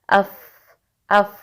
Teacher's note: फा जैसे कि आप तस्वीर में भी देख सकते हैं, ये तब अदा होता है जब आपके ऊपर के सामने वाले 2 दांत, जिन्हें सनाया उलिया कहा जाता है, उनका किनारा जब नीचे वाले होंठ के दरमियान में लगता है तो फा अदा होता है।